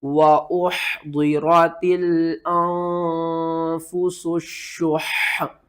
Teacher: سین کو سیٹی کے ساتھ پڑھنا ہے، شین کے اوپر آپ نے سختی کرنی ہے